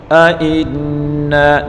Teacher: ائنا نون مشدد غنہ کے ساتھ پڑھیں گے